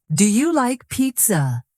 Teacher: Let your voice rise at the end. · when you ask a yes or no question like, Are you ready? your voice rises at the end.